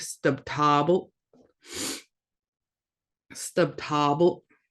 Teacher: We got another glottalized L, so it just kind of cuts off that sound.